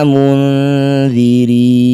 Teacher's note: Kemudian di sini ada nun sukun bertemu dzal disebut bacaan namanya ikhfa au safo. Cara bacanya bunyi nun dengungkan dua harakat ketika dengung.